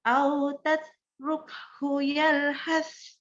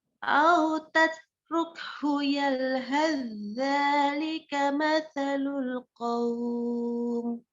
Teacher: Tetapi kalau mau disambung, ya, kalau mau disambung maka baca sa sukunnya tadi itu kan kalau sa sukun kan ada udaranya. Yalhas. Nah, ini hilang udaranya. Langsung ke zal. Jadi kayak zalnya bertasydid langsung.